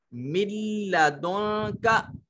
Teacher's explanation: اب نون نہیں پڑھی جائے گی، براہ راست لام کے ساتھ ملائیں گے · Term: ادغام